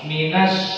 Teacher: Karena huruf sin dia itu pada tengah lisan kita. Udara yang keluar itu kuat.